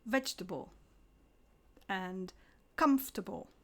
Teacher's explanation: iPhone and please remember there's no table in vegetable or comfortable we stress the first syllable